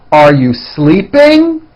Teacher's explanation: Notice how my voice goes up at the end of a question like this.